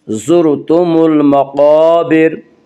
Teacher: रा साकिन से पहले ज़बर और पेश आए तो रा साकिन को पुर पढ़ा जाएगा